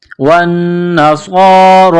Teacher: والذین ہادو والنصارى، واو کو نون کے ساتھ ملانا ہے، پلس کرنا ہے، نون مشدد ہے تو یہاں آواز ناک میں چھپائیں گے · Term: غنہ